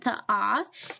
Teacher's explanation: it is a low back vowel